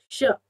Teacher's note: श बोलने पर आपकी जीभ तालु पर टकराती है, दांतों से थोड़ा सा पीछे, आपका तालु वाला श कहलाता है।